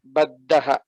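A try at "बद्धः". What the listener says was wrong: Baddhaha. Dha Mahaprana. Baddhaha. Yuddham baddhaha. This is how the pronunciation will be.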